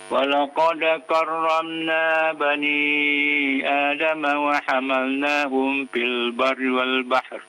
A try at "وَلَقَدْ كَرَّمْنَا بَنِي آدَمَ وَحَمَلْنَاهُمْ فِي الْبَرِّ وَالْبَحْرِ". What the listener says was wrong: Jangan terburu-buru bacanya Pak ya, santai aja Pak ya.